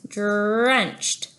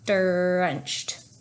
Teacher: our tongue is up there for the D and then it needs to be pulled back for the are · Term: art direct